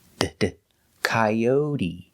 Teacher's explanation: And the T is pronounced with a D sound